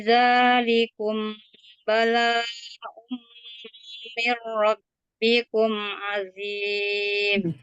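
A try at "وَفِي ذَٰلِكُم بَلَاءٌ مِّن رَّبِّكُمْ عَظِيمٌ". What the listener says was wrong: Nah, di mad wajib ataupun mad jaiz itu sama ya. Sebaiknya dibaca 4 harokat. Jadi itu masih kurang. Wa fi dzalikum bala'un. Mim bertemu ba. Wa fi dzalikum bala.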